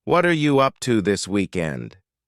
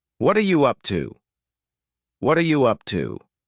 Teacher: hear the word what and are creating a spoken contraction